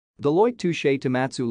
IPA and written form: dəˈlɔɪt ˈtuːʃ toʊˈmɑːtsuː (Deloitte Touche Tohmatsu)